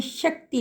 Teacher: क जो है हलंत के रूप में है, स्वर रहित है, त पूरा है और उसके साथ अ की ध्वनि जुड़ी हुई है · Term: कत संयुक्त